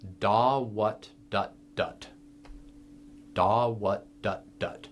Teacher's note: Now, what that represents, the T endings of what and dut mean that those are notes that we are stopping the reed's vibration at the end of it. When you say what, when you get the T sound, your tongue snaps back to the roof of your mouth.